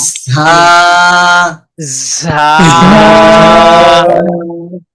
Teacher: ঝা এটার সাথে দুইটা জিনিস খেয়াল রাখবো, সিটি আওয়াজ বের হবে আর হরফটা শক্ত হবে।